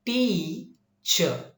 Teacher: first syllable is produced longer, higher and louder. That means whether it is pronounced longer or higher or louder, this may be of one particular reason, that is long vowel.